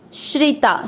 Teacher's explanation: श्र की मात्रा छोटी है, लंबा नहीं खींचेंगे। श्री, श्री का अर्थ होता है श आधा र पूरा, र पे ई की मात्रा लगे, श्री, श्रिता।